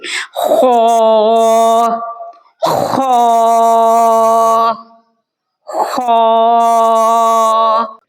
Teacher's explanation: خا جو ہے وہ ادنا حلق سے نکلتا ہے اور خا کو ہم پر پڑھیں گے، خا کو موٹا ادا کریں گے۔ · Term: حرف خا